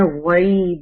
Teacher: یہ غین ہیوی ہے, یا ساکنہ سے پہلے غین پر زبر ہے تو یہ یا لین ہے